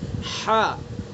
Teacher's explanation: ہا کا مخرج وسط حلق یعنی بیچ سے حلق کے درمیانی حصے سے